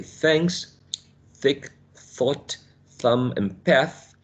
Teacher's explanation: They are articulated, putting the tongue in between the upper and the lower teeth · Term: interdental consonant sounds